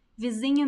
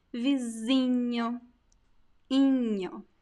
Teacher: The diminutive words inho, inha are very common, and the I is very nasal.